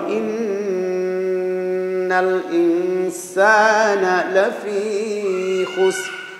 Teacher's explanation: এই যে ইন্না এখানে নাকের ভিতরে গুন্না করে পড়তে হবে